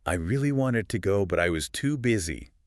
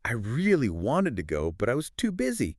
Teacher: See how wanted and too busy just pop. Those are the key ideas. So they get the stress the little words really do but I was. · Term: natural rhythm